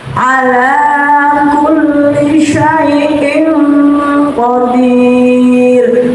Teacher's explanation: Disebut bacaan ikhfa hakiki, artinya samar-samar dengan sebenarnya. Jadi kasrah tanwin dibaca samar dengan qaf dengung.